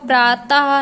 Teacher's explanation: विसर्ग का उच्चारण हा की तरह होता है, जो हलंत नीचे लगता है।